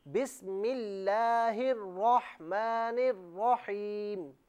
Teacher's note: بسم اللہ میں جو لفظ اللہ کی لام ہے نا، اسے باریک پڑھیں